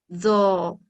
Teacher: زبان کی نوک کو اوپر کے دانتوں کی جڑ سے لگا کر تفخیم کے ساتھ پڑھا جاتا ہے۔